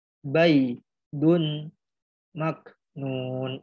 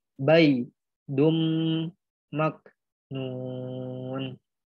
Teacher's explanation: Jadi dibacanya dileburkan ke huruf mim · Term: idgham biguna